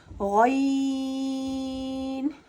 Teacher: غین حرف مستعلیہ میں سے آتا ہے تو ہم اسے پوری یعنی موٹا پڑھیں گے